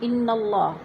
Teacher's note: اللہ سے پہلے لفظ نون کے اوپر زبر ہے تو اللہ کو پر کر کے پڑھیں گے · انا کی نون مشدد ہے، سختی سے جمع کر پڑھیں گے